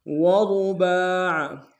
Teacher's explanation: وثلاث ورباع، را کو موٹا ادا کریں گے، با کے اوپر کھڑا زبر ہے، ایک اعتدال میں کھینچیں گے، عین کو موٹا ادا کریں گے